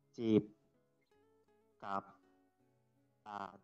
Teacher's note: jadi untuk konsonan kelas tengah ini nadanya low tone, ya, rendah